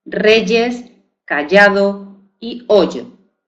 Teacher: podemos encontrarnos el sonido consonántico de ese fonema palatal sonoro Y en palabras como reyes, callado o hoyo, ¿verdad? Ahí no se pronuncia como I, se pronuncia como Y.